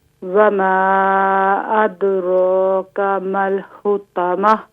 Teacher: را پر کھڑے زبر کی علامت ہے، اس کو ایک الف کی مقدار کھینچ کر پڑھیں گے